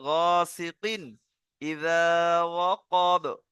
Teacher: একে বিনা গুন্নায় জাহির করে পড়তে হবে, গুন্না হবে না